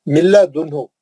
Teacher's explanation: लाम है। मिल्ला दुन्हु, नून गायब हो गया, नो गुन्ना, विदाउट गुन्ना